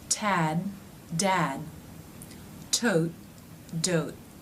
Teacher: The last two word pairs ended with T's and D's. Did you notice that I did not release them?